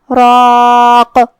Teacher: اور ہم کلمت راق پہ رکیں گے تو قاف پہ جزم سے رکیں گے تو جو کہ قاف حروف القلقلہ میں سے ہے اور قلقلہ کا معنی ہے حرف ساکن کو ہلانا. لہذا ہم قاف کو ہلاتے ہوئے یہ کلمہ پہ رکیں گے